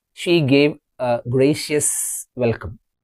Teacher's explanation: While we are speaking we have to say uh instead of a